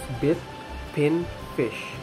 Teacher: though this vowel is in the closed front area compared with the cardinal vowel number 1, it is more open and nearer into the center. The lips are slightly spread.